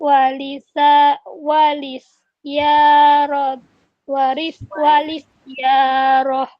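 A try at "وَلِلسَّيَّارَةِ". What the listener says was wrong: Ini tasdidnya ada 2. Di sin sama di ya. Walis sayyaroh.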